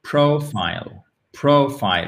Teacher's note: vous avez l'accent tonique sur la première syllabe